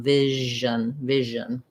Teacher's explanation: you can try making these words with an SH, like vision, and then turn the voice on, keep it on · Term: zh sound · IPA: /ʒ/